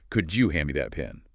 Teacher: Often becomes, could you hand me that pen? The D and Y sounds blend into a J sound.